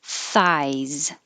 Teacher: And the TH is voiceless, just airflow.